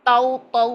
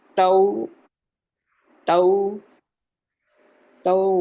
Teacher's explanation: ये जुबान का पीछे से उठ जाना ये तौ की तरफ जा रहा है जबकि हमने तऊ तऊ बारीक रखना है